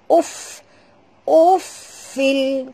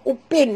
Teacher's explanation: Ketap gigi atas ke bibir bawah. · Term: bunyi hammasnya